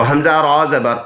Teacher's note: اس را کو ہم نے پر پڑھنا ہے کیونکہ را پر سکون ہے اور را سے پہلے والے لفظ پر زبر آیا ہے